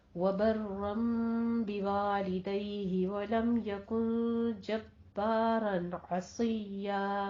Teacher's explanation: वलम यकुन में लम में मीम साकिन का कायदा ज़ाहिर शफ़ी, यकुन में इख्फा हकीकी करना है और जब्बारन में भी इज़हार हल्की करना है। आइन को वस्ते हलक से और स्वाद को पुर पढ़ना है सीटी की आवाज़ के साथ। · बर्रम में भी रॉ, जब्बारन में भी रॉ दोनों जगह मुफख्खम है और पहले वबर्रम पे इक़लाब करना है, 2 काउंट करने हैं।